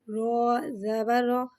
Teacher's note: رو پہ زبر ہے لہٰذا سے منہ کھول کے ادا کریں گے اور رو کو موٹا پڑھیں گے کیونکہ رو پہ زبر ہے